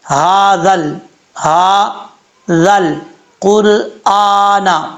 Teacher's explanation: قاف حروف مستعلیہ میں سے پر پڑھا جائے گا۔ اس کا مخرج پہلے بھی بار بار بتا چکا ہوں، زبان کی جڑ اوپر والے تعلق کے نرم حصے سے لگے تو قاف پڑھا جاتا ہے، 2 نقطوں والا۔